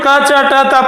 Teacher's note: ये जो क, च, ट, त, प है ये अघोष ध्वनियां हैं